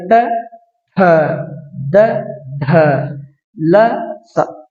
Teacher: ದಂತ್ಯ ಅಂತಂದ್ರೆ ಹಲ್ಲು ಅಂತ ಹಲ್ಲಿನ ಸಹಾಯದಿಂದ ಉಚ್ಚರಿಸಲ್ಪಡುವಂತ ಅಕ್ಷರಗಳು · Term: ದಂತ್ಯಾಕ್ಷರಗಳು